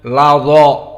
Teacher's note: Maka dha huruf mufakhamah. Maka alifnya menjadi mufakhamah.